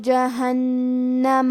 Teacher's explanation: کلمت جہنم میں حرف نون کو 2 حرف کے برابر پڑھیں گے کیونکہ اس پہ تشدید ہے